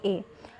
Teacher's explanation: कंठ और तालु में जीभ के स्पर्श से बोले जाने वाले वर्ण हैं ए और ऐ